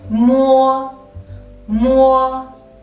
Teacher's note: And mo is different because of its nasal sound. The airflow goes through from the nose.